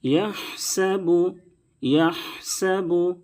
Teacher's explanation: بڑی ہا ہے، اس کو درمیانی حلق سے ادا کریں گے